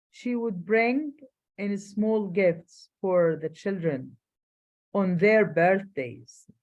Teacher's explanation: Absence of stress on the word would when describing behavior in the past only indicates that this is typical behavior and doesn't indicate criticism.